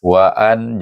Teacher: Eh waan jangan panjang, jangan dengung. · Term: izhar halqi